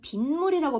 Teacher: 비와 물이 만났는데 비물이라고 발음하지 않고 우리는 빗물이라고 발음하죠. 니은이 덧났구나. 얘도 사이시옷 추가해주자.